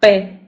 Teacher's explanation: presenta un fonema un sonido oclusivo labial p de acuerdo Entonces oclusivo porque cerramos los labios verdad y porque utilizamos los dos labios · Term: oclusivo labial sordo